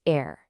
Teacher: Also, don't forget the French R pronounced air. It's guttural. It comes from the very back of your throat, kind of like a really soft gargle.